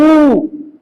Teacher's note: होट क्या हो रहा है आपका गोल हो रहा है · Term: होट वर्न